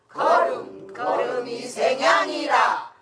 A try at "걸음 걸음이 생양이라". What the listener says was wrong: 너무 높잖아 생양이라